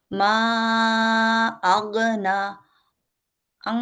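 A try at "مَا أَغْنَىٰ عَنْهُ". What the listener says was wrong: নাতে টান হবে আগনা আলিফ আছে ছোট্ট করে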